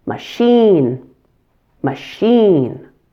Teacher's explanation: make sure that you stress the second syllable in machine and that the first syllable is a very quick schwa sound again.